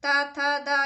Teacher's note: ता था दा ये दंत्य ध्वनियाँ होती हैं।